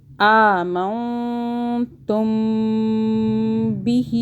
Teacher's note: جب میم ساکن کے آگے با آئے گا تو اس میم پہ ہم غنہ کریں گے 2 سیکنڈ کا